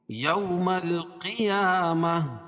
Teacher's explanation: کھڑا زبر قائم مقام الف مدہ کے اس کو ایک الف کے برابر کھینچ کے پڑھیں گے